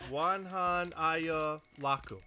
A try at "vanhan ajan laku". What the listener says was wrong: You pronounce the W like a V though, so. Vanhan.